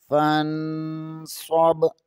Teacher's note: نون ساکن کے بعد صاد حروف اخفا میں سے ہے، یہاں اخفا ہوگا